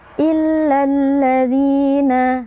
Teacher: Illa sebenarnya ada mad tabi'i, tapi karena kita wasal dengan alladzina, mad tabi'inya kita gugurkan.